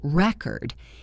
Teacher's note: If the stress is on the first syllable record, it is a noun like a vinyl record or a written record. If the stress is on the second syllable record, it is a verb meaning to tape something.